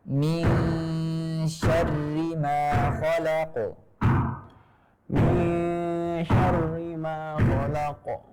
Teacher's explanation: Jadi kasrah mengharuskan tipis, ya kan? Walaupun kasrohnya bertasydid, maka harus tetap tipis. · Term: huruf ra, kasrah yang bertasydid